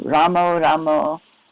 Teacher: Bengalis often turn the ending A sound to an O.